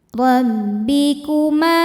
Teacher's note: Rbikuma ma hukumnya mad thobi'i zohiri. Sebab ada alif didahului harakat fathah. Cara bacanya panjang dua harakat.